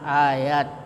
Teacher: ini disebut mad tabi'i, mad yang panjangnya biasa ya, 2 harakat, 2 ketukan tak tak ya, atau 1 alif.